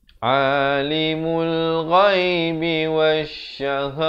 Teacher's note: Ta marbutah. Bila waqaf ditukarkan kepada bunyi ha.